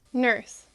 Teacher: the bunched r which is common in north american english is particularly complex